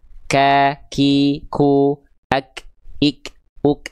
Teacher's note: Sebenarnya mengalir nafas. Cuman pengkhususan untuk huruf kaf dan ta dia hanya berupa terpercik nafas aja. · itu dilafalkan dari pangkal lidah yang disentuhkan ke langit-langit yang lunak dan keras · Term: Hams, hams